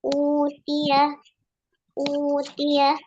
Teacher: karena hamzahnya berharokat dhammah, maka hamzah yang kedua tadi diganti dengan mat, yaitu waw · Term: mat badal